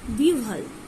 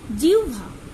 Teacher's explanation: তৎসম শব্দে হয়ের সঙ্গে যুক্ত ব ফেলার উচ্চারণ ইংরাজি ডাব্লিউর মতো হয়।